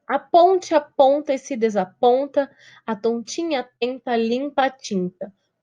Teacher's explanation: o ar ele vai escapar pelo nariz, ele não escapa pela boca. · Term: som nasal